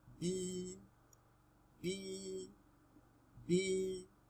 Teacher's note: Ya'u maddin, used to prolong a letter with kasra, as in b, b, b.